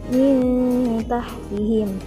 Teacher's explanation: Selanjutnya pada kalimat min tahtihim ada nun mati bertemu dengan huruf ta, maka termasuk hukum bacaan ikhfa hakiki, cara membacanya disamarkan